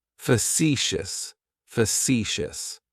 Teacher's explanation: Facetious has 3 syllables, and the stress is on that second syllable. It's like you're just saying the letter C for C.